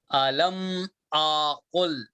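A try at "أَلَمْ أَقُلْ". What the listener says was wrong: الگ ہو جا رہا ہو جلدی پڑھو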